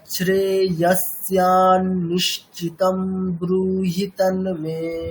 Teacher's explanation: পরে দন্তীয় স আছে মানে বিসর্গটা কি হয়ে যাবে, দন্তের মতো উচ্চারণ হবে